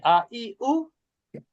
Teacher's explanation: ভাগ থেকে তাই শুরু থেকে হচ্ছে সাধারণ উচ্চারণ আ ই উ, একটু হালকা ধাক্কার মতন করে আ ই উ।